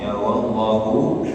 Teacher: lafzul jalalah didahului dengan huruf tebal huruf fathah maka dia tebal wallahu jangan wallahu tapi wallahu wallahu ha keluarkan dari tengah tenggorokan, ya, tengah tenggorokan.